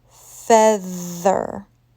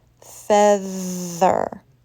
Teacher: Notice how there's friction in my throat. My vocal cords are moving. Feather. That is a voiced TH.